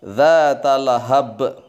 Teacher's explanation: baknya harus qalqalah kubro, memantul yang besar. Dzata lahab, jangan panjang-panjang, lahab salah, tetapi dzata lahab langsung direm masuk ke bak.